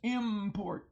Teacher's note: So we have the chameleon prefix m, which actually is in, right? And the n has assimilated to the p. And so now it becomes an m, which may I say are two bilabials. Or you use your lips, import.